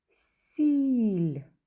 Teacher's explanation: у слові сіль звук і він як який голосний позначаємо кружечком пригадуємо що звук і пом'якшує попередній приголосний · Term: м'який